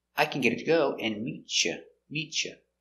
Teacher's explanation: t changes to a ch sound